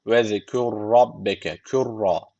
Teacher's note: tek bir ra varmış gibi okuyoruz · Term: idgam